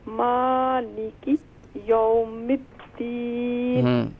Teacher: میم پر کھڑا زبر ہے، اسے ایک الف کی مقدار کھینچیں